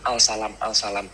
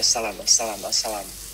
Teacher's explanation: Jadi kalau kita ucapkan dengan cepat, L-nya ini seolah tidak terucap, jadi as-salam, as-salam, as-salam. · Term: proses asimilasi